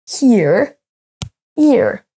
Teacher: Si vous ne prononcez pas le H, vous dites oreille, ear.